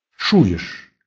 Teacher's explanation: В слове чуешь твердый ч и ш.